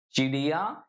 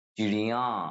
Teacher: చిడియా అనే అనేటువంటిది ఏకవచనం ఒకటి చిడియా అంటే నోస్ తో పలికితే అది బహువచనం అయిపోతుంది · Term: అనునాసిక